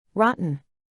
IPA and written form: ˈrɑː.tən (rotten)